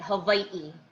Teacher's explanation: so the okina is actually a letter in the hawaiian alphabet and it's like they call it a glottal stop